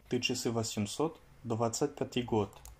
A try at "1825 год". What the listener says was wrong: Alors, il y a quelques erreurs par rapport à la date, donc 1825. Tu as dit, donc pour 1000 d'abord, тысяча. Tu as dit tit. Tu as ajouté un T en fait.